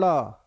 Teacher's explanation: आना ठीक है ऊपर यानी चढ़ना और क्षिप्त मतलब नीचे आना जिसको बोलते समय स्वर ऊपर और नीचे दोनों तेजी से होता है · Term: उत्क्षिप्त व्यंजन